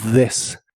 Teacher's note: La TH de this suena como una D vibrante